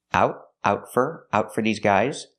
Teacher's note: We hear the T in out as a stop T.